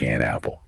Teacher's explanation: We don't usually say an apple with a big pause, right? That n sound at the end of an, it just slides right into that sound of apple and it ends up sounding more like an apple. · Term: linking